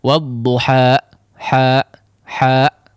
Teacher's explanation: tidak perlu ada hentakan seperti itu Ketika menghabiskan suara Made ya dia biarkan suara itu habis di udara tanpa harus menutup kedua pita suara · jangan seolah menambah huruf hamzah di akhir